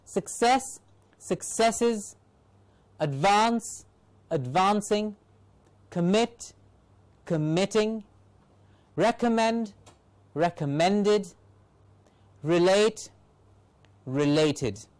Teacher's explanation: you can hear that the accent does not change at all it remains the same there is no change the only change is that the suffixes